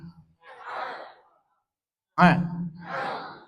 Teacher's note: posisi huruf ain dengan ha itu ada di tengah-tengah tenggorokan, di bawah posisi daripada makhraj adnal halqi. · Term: wastul halqi